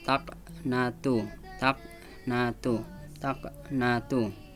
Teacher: Karena qalqalah huruf ko, tapi membacanya tidak terlalu keras mantulannya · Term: qalqalah sugro